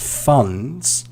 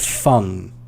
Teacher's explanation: So the D sound, although it's not a really stressed letter in that word, it's still present.